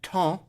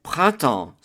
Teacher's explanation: Second syllable is temps, which is the word for time, and the E-M-P-S is a nasal sound, sounding like en as in enfant